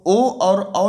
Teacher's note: ओ और औ जब आप लोग और हम लोग बोलते हैं तो हमारा जो हमारे होंठ हैं वो गोल हो जाते हैं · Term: कंठोष्ठ